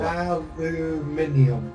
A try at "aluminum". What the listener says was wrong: It's aluminum. There's no I in it. It's aluminum.